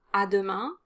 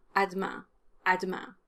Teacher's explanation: you can definitely drop the er after the d sound